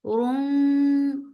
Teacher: Rum idgham bitgunna, so keep the sound in your nose for a longer time.